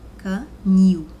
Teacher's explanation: Então, você percebe aí que a palavra nil, ou seja, a sílaba nil, o som soa mais forte do que o K. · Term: oxítona